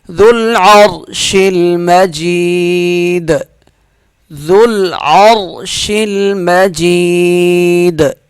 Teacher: دال پہ قلقلہ ہوگا وقف کی صورت میں